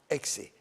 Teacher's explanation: the Xe is a K and S together, exactly like the letter X in English. The letter X in English has two sounds, the K and the S.